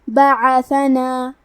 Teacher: کلمت بعثنا میں عین کی ادائیگی حلق کے درمیان والے حصے سے ہے. با پہ، عین پہ، ثا پہ اور نون پہ چاروں پہ زبر ہے، تو ہم یہ چاروں زبر کو برابر سے ادا کریں گے.